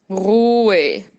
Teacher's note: Atenção para a pronúncia do Ruhe. Esse H também não falo.